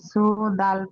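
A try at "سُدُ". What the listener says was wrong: সুদু, সু টান হয়ে যাচ্ছে, সুদু সু।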